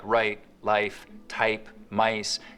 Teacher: It also affects the price vowel in the same way, so that the starting point of words like right, life, type, mice can get raised too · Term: Canadian raising